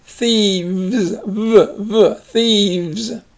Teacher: the F, the unvoiced F, becomes voiced when it's got a vowels.